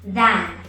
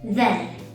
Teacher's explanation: So than has the long ah sound, than. And then has the reduced schwa sound, then.